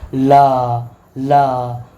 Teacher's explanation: जीभ के पार्श्व भाग में साइड से थोड़ी सी हवा निकलती है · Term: पार्श्विक व्यंजन